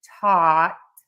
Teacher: And we are going to have the TH here. So for taught, we start by touching the back of the top front teeth for that T, taught, and we end there with the T.